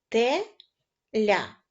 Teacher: приголосний л м'який А ось буква я позначає один звук а поділимо слово теля на склади те ля наголошеним буде склад ля